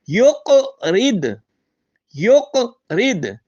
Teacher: یق رید میں یا پیش کاف یق ہم اس پر قلقلہ کریں گے، آواز لٹائیں گے